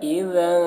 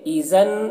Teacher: قالو تلک اذا، دیکھیے ذال میں ذال کو باریکی کے ساتھ ادا کرنا ہے، اذا، ٹھیک ہے، ایزن نہیں پڑھنا ہے